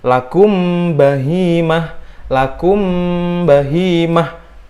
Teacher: karena mim bertemu ba itu dia menyatu gitu. Samar-samar jadinya nyatu. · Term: ikhfa syafawi